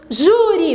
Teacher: a sílaba tônica é na penúltima sílaba